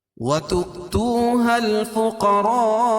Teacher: توسط اور طول ہے، یعنی 2 الف سے لے کر 5 الف تک اس کو کھینچ کے پڑھیں گے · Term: مد متصل